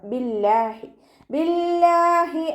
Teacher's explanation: ഇസ്മുൽ ജലാലയിലെ ലാമിനെ താഴ്ത്തി ഉച്ചരിക്കുട്ടോ